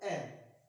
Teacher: जब मैं ए का उच्चारण करता हूँ तो जो जीवा की स्थिति बीच में से उठती है। अब बीच में से उठने की वजह से ए का उच्चारण स्थान कौन सा हो जाएगा, मध्य स्वर, मध्य का भाग होगा तो मध्य स्वर कहलाएगा ए।